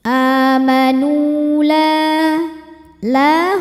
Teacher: sebab ada Alif didahului harakat fathah cara membacanya huruf lam dipanjangkan dua harakat